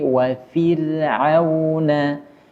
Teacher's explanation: huruf ra yang sebelumnya huruf kasrah, maka ra sukun dibaca tipis. Wa fir'auna, tidak boleh dibaca tebal.